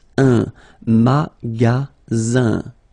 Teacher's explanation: the ending here is IN, so it's nasal, goes in your nose